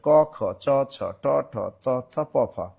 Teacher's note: বর্গের প্রথম ও দ্বিতীয় ধ্বনি হলো অঘোষ ধ্বনি